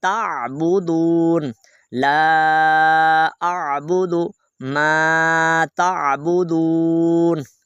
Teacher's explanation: تا حمزہ پڑھیں گے تو جھٹکا آئے گا، تو آپ نے جھٹکا نہیں دینا بلکہ عین کو پڑھنا ہے